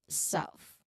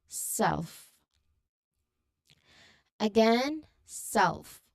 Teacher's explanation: Next, the F uh LF cluster with the example word self. Okay, this combines the L sound with the F sound at the end of the word.